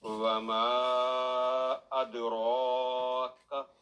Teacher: کاف پر جو فتح ہے وہ لمبی نہ ہو